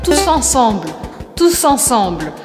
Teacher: pronunciando aqui o S no final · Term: liaison